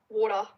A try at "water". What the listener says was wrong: You're saying it like it's w a d a, water. It's not water.